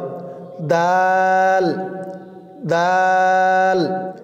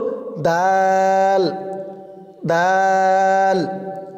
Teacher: দালের মাখরাজ, জিব্বার আগা সামনের উপরের দুই দাঁতের গোড়ার সঙ্গে লাগিয়ে উচ্চারিত হয়